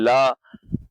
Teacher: तो देखिए, ला जो होता है इसे हम कहेंगे यहाँ पर पार्श्विक, है ना। तो जब ला को हम बोलते हैं तो हवा जो होती है जीभ के बगल से निकल जाती है ना। तो ये एक यहाँ पर पार्श्विक व्यंजन होता है।